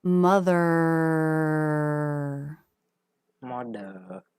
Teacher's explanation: the ending R lip position is much more relaxed